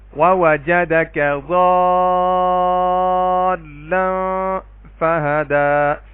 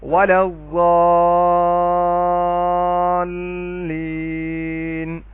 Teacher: اب دوسری چیز دیکھیں، یہاں پہ دیکھیں، الف سے پہلے غاد کے اوپر زبر ہے اور لام پر تشدید ہے، تو یہاں پہ بھی ہم 3 سے لے کے 5 الف کے برابر مد کریں گے، اور اس مد کو مد لازم کہتے ہیں